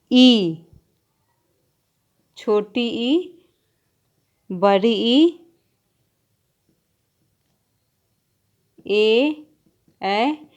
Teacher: इनके उच्चारण में जीवा का अगला भाग उठता है ऊपर, इसी से अग्र स्वर इन्हें बोला जाता है।